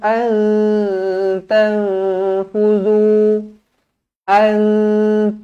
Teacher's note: Nun kosong bertemu ta Nun kosong bertemu Fa kedua-duanya ikhfa Hakiki dengan dua harakat